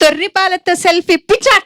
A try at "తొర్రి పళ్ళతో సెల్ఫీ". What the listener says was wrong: తొర్రి పాలు లేదు, తొర్రి పళ్ళు. తొర్రి పళ్ళతో సెల్ఫీ.